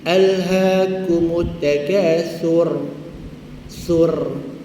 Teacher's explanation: Getaran itu wajib, yang tebalnya pada pangkal lidah.